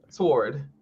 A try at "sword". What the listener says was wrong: you ain't supposed to say that W. Yes, the W in sword is silent.